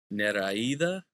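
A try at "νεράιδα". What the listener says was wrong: No, because the stress is on the alpha. Neraida. Neraida.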